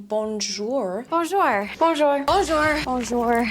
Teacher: She doesn't know the sound oo, so she tries to find the closest sound in her language, which is or.